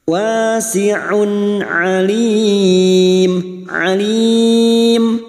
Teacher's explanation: harakat wasi'un wasiun huruf Ain Duma tanwin bertemu Ain Idhar halq Duma tanwin dibaca jelas tanpa mendengung · Dhamma tanwin dibaca jelas tanpa mendengung. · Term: idhar halqi